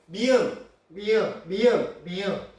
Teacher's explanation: 울림소리 같은 경우는 미음, 니은, 이응이 한 개층이고 리을이 한 개층인데 발음을 해보면 미음, 미음, 미음, 미음 코를 막으면 소리가 달라지는 이 미음과 니은과 이응을 우리는 코 비자를 써서 비음이라고 합니다.